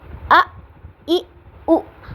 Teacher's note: جیسے حمزہ زبر حمزہ ا، حمزہ زیر ای، حمزہ پیش او، ا ای او. حمزہ کو ہم نے جھٹکے کے ساتھ پڑھنا ہے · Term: حمزہ کا جھٹکا